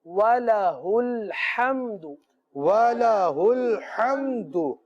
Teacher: وَلَهُ میں ہا جو سینے سے متصل حلق سے ادا ہوتا ہے، اور آگے جو ہا ہے وہ وسط حلق سے ادا ہوتا ہے. دونوں کی مخرج جو ہے جدا جدا ہے، ادائیگی میں بہت زیادہ فرق ہونا چاہیے.